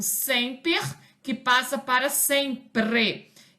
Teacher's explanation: a inversão entre esse fonema representado pela letra R e a vogal anterior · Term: metátese